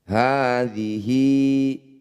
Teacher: ha yang berharokat fathah panjang disebut mad tabi'i. Panjangkan 2 harokat.